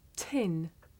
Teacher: the puff of air at the beginning of tin makes the paper move